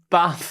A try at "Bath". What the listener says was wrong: No. Long A. Bath.